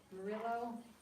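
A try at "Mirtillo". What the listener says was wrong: There's a T in there. Myrtillo.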